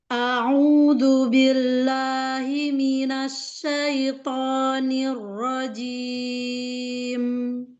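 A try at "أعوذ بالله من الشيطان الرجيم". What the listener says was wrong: Sempurnakan la, sempurnakan shin.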